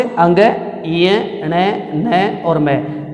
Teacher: इन वर्णों का उच्चारण स्थान जो है वो मुख के साथ साथ नाक से भी होता है, इसलिए इसने इसको नाम दे दिया नासिक्य व्यंजन।